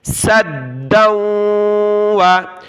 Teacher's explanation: سین دال زبر سد، دال واو، دو زبر دو، واو زبر و، سدًّا و، دال کے اوپر تشدید ہے تو ہم نے جمع کر سختی کے ساتھ پڑھنا ہے